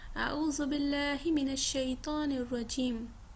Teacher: لفظ اللہ کو مرقق ادا کریں گے، یعنی لام جو ہوگا اس کو باریک ادا کریں گے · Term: لام جلالہ